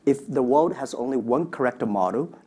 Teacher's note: So you can hear a corrector. There's a sort of extra sound after correct. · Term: add sounds between